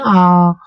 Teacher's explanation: पीछे से ये आवाज आ रही है, बोल रहे हैं तो पूरा मुंह खोलना पड़ रहा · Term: पश्चिम भाग